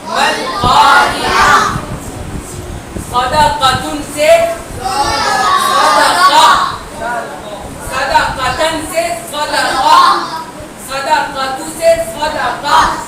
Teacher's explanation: تو جب بھی ہمیں گول تا پر رکنا ہوگا یعنی وقف کرنا ہوگا تو ہم کیا کریں گے؟ اس گول تا کو ہا ساکن سے چینج کر دیں گے، ملا نہیں دیں گے، بدل دیں گے